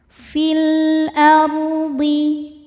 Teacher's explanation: Cara bacanya lam dibaca idhar atau jelas, disebut juga dengan idhar qamari.